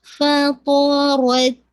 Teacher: اب آپ نے را کو ہیوی کر کے تا کے ساتھ جیسے کہا جائے پہلے را شدہ اور پھر ہلکی سی فوراً سے ایئر بلو کر دینی ہے